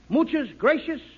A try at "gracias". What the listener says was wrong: No, not gracious. That word is gracias. You see, in Spanish, the C is pronounced TH. Look, gracias. TH. In Spanish, the TH...